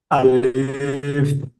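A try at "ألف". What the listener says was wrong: টান দেবেন না, আলিফ টান হবে না। আলিফ টান হবে না।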